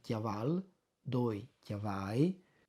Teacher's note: Praticamente, disin così tanto per dare un'idea, come i domandi scuse e perdono in genogli davanti ai linguisti, ma è giusto per far capire, è come se la parola chiaval, tal tempo, la L finale, fosse state stricciate dal palato e da chiavala diventa chiavagli, chiavai, vadi al bene. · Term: palatalizzazione